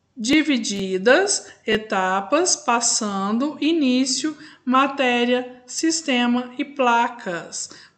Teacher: Por quê? A sílaba tônica está na penúltima sílaba. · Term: Paroxítonas